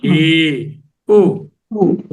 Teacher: ఊ స్వరపేటిక దగ్గరే ఉంది, నాలుక దేన్ని స్పృశించటం లేదు. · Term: స్వరాలు